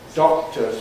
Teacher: You can't hear usually the explosion of the K in doctors.